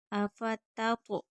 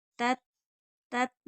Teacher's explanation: پہلی تا باریک پڑھی جائے گی، دوسری تو پر پڑھیں گے کیونکہ تو حروف مستعلیہ ہے